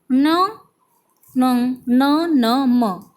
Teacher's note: ये व्यंजन वर्णों का उच्चारण नासिक के साथ क्रमशः कंठ, तालु, मूर्धा, दांत, ओष्ठ के स्पर्श से होता है, अतः इन्हें नासिक व्यंजन कहा जाता है।